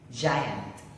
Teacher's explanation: The fronts and sides of the tongue contact the alveolar ridge anteriorly and laterally.